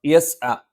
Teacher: ഐൻ തൊണ്ടയുടെ മധ്യഭാഗത്ത് നിന്നാണ്.